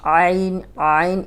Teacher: عین حلق کی طرف پیچھے زبان دبائیں، جھٹکے سے نہیں پڑھیں گے، آرام سے نکل آئے گا یہ، لیکن یہ پریکٹس سے نکلے گا۔